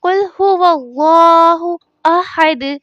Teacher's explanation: اللہ عز و جل کے لام سے پہلے زبر آ گئی تو لام کو پر پڑھا جائے گا، یعنی اس طرح کہ قل هو اللہ احد۔